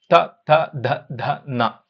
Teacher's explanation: ನಾಲಿಗೆ ಮತ್ತು ಹಲ್ಲು ಎರಡು ಸೇರಿಕೊಂಡು ಏನ್ ಮಾಡುತ್ತೆ ಅಲ್ಲಿಂದ ಒಂದು ಅಕ್ಷರವನ್ನ ಹುಟ್ಟಿಸ್ತಾ ಇದೆ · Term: ದಂತ್ಯಾಕ್ಷರಗಳು